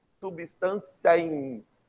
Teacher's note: Conta-se a última vogal com a vogal da próxima palavra em uma única sílaba, chamada de sílaba poética.